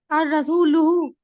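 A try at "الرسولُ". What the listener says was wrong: अर रसूलू। ठीक है, लुहु नहीं बोलेंगे, हाँ नहीं आता। अर रसूलू, लाम पेश लू।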